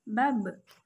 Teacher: Ketika huruf ba dalam posisi mati, suaranya terdengar memantul.